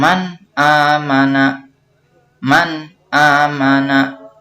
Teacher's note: Maka kalimat man amana harus dibaca secara jelas. Artinya tidak disertai dengan samar ataupun didengungkan. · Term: izhar